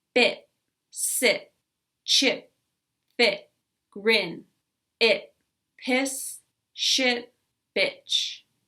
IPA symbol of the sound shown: ɪ